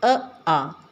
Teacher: इन दोनों का उच्चारण स्थान कंठ है